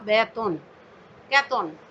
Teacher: মধ্য অ এর আগে এ থাকলে, যেমন বেতন, বেতনে এখানে তর সাথে মধ্য অ আর আগে রয়েছে বে, এ, এজন্য ত এর অটা ওকার হয়ে গেছে। উচ্চারণে দেখো বেতন, কেতন, কেতনের উচ্চারণ হলো কেতন ইত্যাদি।